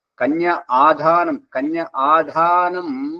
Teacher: కన్యాదానం కాదు అల్పప్రాణం కాదు మహాప్రాణం గుర్తుపలకాలి